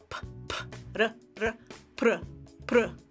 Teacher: And then for the PR combination, you're gonna bring your lips together, and with your tongue at the same time, you're gonna tap that ridge inside your mouth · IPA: /pɾ/